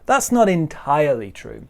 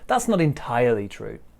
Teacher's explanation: we put a stress on the i sound in entirely